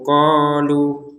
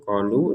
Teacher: lu-nya kita panjang 2 harokat saja karena tidak gabung dengan hamzah. Kalau digabungkan baru 5 harokat.